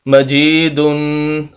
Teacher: next لفظ ہے میم زبر ما، جیم زیر یا جی، مجی، دال دو پیش دن، مجیدن، تقریباً ساری وہی باتیں ہیں، زبر زیر پیش والی وہی بات ہے، یا مدہ ہے لمبا کرنا ہے، آخر میں تنوین ہے، دو پیش ہیں تو یہاں پر غنہ کرنا ہے، ناک میں آواز لے کر جانی ہے